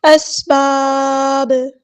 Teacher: ساکن جب کریں گے تو یہاں پہ قلقلہ ہوگا، اس کو آواز کو ہلائیں گے